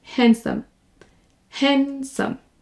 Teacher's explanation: on ne prononce pas le D, et on prononce comme s'il n'y était pas là.